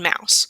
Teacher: the lips come together and the tongue is in the center of the mouth. The sound travels through the nose.